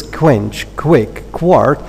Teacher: in the three cases, the k is both labialized and aspirated.